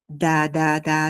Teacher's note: quand tu dis de, la pointe de la langue touche presque au même endroit que pour le R grec. Donc au lieu d'essayer directement un grand R, on va à partir de quelque chose de plus simple. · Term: le de